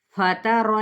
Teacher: چلے یہاں پہ جو آج ہم نے شفاتان سیکھا ہے مخرج کے اعتبار سے، تو اب ہم دیکھتے ہیں کہ یہ دیکھیں یہ فا اس کے اندر موجود ہے، تو آپ نے ثنایا علیہ یعنی اوپر والے 2 دانتوں کا سرا نیچے والے ہونٹ کے گیلے حصے سے آپ نے لگائیں گے تو فا ادا ہوگا